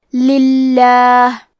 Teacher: لفظ الجلالہ مطلب کلمت اللہ کے لام کا حکم ہے ترقیق تو ہم حرف اللام کو پتلی آواز میں پڑھیں گے